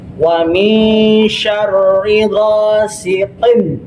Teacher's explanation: Yang dimaksudkan izhar itu jelas. Qin bertemu dengan huruf alif itu jelas.